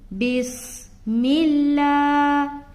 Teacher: لا کو کھینچ رہے کیونکہ کھڑا زبر ہے